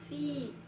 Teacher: Kata yang ketiga yaitu pada kata fi hukumnya itu mad thobi'i. Karena kasrah diikuti ya sukun dibaca panjang dua harakat.